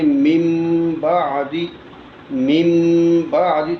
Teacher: نون ساکن کے بعد حرف با آ جائے تو وہاں نون ساکن کو میم سے بدلنا ہے۔ · اب یہاں نون ساکن کے بعد با ہے تو ہم نون ساکن کو جو ہے میم کے ساتھ تبدیل کریں، اب نون نہیں پڑھا جائے گا، یہاں پہ میم پڑھا جائے گا۔ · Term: اقلاب کا غنہ